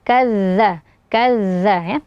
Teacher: Kazzabat Tsamud, huruf kaf, kemudian setelahnya ada zal bertasydid. Huruf zal ini merupakan huruf yang memiliki sifat hamas dan rokhawah, jadi suaranya dan nafasnya mengalir.